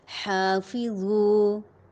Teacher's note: فا ثنایا علیا نیچے والے ہونٹ کے شکم کے ساتھ اس کے کنارے اور سرے ٹکرائیں گے. ہا کے اوپر کھڑی زبر ہے، اسے ایک الف کے برابر لمبا کریں گے · ہا وسط حلق سے ادا ہوگا یہ حرف. فا ثنایا علیا نیچے والے ہونٹ کے شکم کے ساتھ اس کے کنارے اور سرے ٹکرائیں گے.